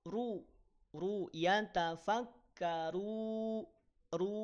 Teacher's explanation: jangan sampai didengungkan runya ya jangan sampai didengungkan